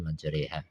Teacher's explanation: Artinya bacaan antara fathah dan kasrah seperti suara e. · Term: imalah